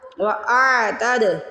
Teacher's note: پہلے حمزہ کی آواز آنی پھر عین کی آواز آنی ہے